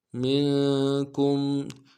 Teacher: میم کو نون ساکن کے ساتھ ملانا ہے، نون ساکن میں غنہ کریں گے